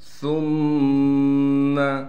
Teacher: سا کو نرم کر کے ادا کرنا ہے، پھر سا کو میم سے ملائیں گے، اس لیے کہ میم پر تشدید ہے